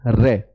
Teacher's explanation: प्रकंपित, कंपन जात या लुंठित या लुढ़कने वाला, इसे कहते हैं रे। जब मैं रे को बोलता हूं तो ऊपर कठोर तालु में आगे की तरफ रे रगड़ खाता है बोलते समय, रे। तो इसे लुंठित क्रिया या कंपन जात या प्रकंपित क्रिया भी कहते हैं।